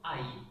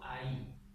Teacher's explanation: Con los diptongos ocurre que el acento va escrito encima del segundo elemento, de la segunda letra del diptongo, pero se pronuncia en el primero